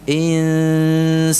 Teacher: Nun sukun yang dibaca dengan samar-samar atau ikhfa di sini itu posisi mulutnya ada pada makhraj huruf sin.